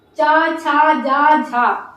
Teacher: जब ये आप वर्ड बोलेंगे तो जो आपकी जीभ है कहाँ टच होगी, तालु से। कहाँ, तालु से, ठीक।